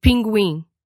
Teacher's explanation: Then there was in as in pinguim, which had the tongue position of E.